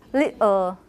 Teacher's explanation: tongue tip but not blocking the entire cavity so you can the air can go out laterally for your l